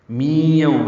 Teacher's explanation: می یوم ہے، میم کی نیچے زیر ہے، ادغام ناقص ہے، غنہ ہوگا۔